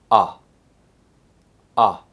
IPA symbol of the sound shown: ʌ